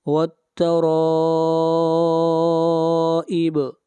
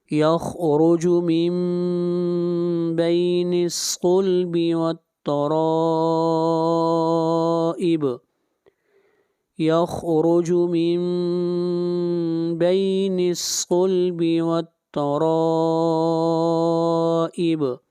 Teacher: اگلی آیت، یخرج من بین الصلب، صاد صلب والترائب، اور را کے اوپر مد متصل ہے، اس مد کو 3 الف کے برابر لمبا کرنا واجب ہے۔ والترائب، با کے اوپر قلقلہ۔